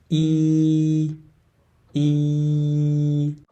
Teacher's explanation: horizontally like your smiling a little bit and to remember that the e sound is a front vowel sound so your front part of your tongue should be on a high position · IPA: /i/